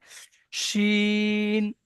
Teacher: শিন জিভের মাঝখান এবং ওই সোজা উপরে তালুর সঙ্গে লাগিয়ে শিন উচ্চারণ হয়।